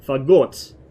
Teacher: in Russian it's pronounced with the stress on the second syllable